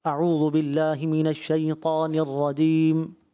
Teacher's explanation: اب شین تو پڑھ دیا لیکن اتنا معمولی پڑھا کہ واضح ہی نہیں ہوا, جو صفت تفشی تھی وہ ادا ہی نہیں ہوئی